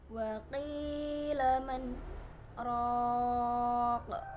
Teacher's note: di antara nun sukun dan ro terdapat bacaan saktah, yaitu berhenti sejenak sekitar 2 harokat dengan tanpa mengambil nafas, kemudian berniat melanjutkan.